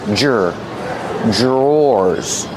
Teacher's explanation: dr makes a J sound. J plus the R together.